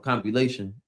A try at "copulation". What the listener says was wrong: say compilation. There's no M there. Make sure you're reading what you're seeing.